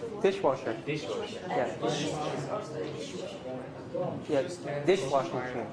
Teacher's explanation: it's a compound noun right so you put stress in the first one